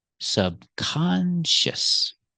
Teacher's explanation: we're going to keep the stress on the second syllable, subconscious